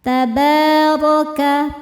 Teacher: Tabarakas, taba, ba hukumnya mad thabi'i muqaddar. Karena ada huruf ba dengan harakat fathah panjang. Cara bacanya panjang dua harakat. Tabaraka. Ra dibaca tafkhim karena berharakat fathah, maka dibacanya tebal.